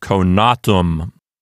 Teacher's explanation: The penult is long. A long syllable, so it gets the accent.